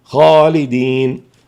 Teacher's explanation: خالدين الخاء مفخمة والألف مفخمة